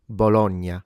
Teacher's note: there are native Italian speakers that do pronounce it with open vowels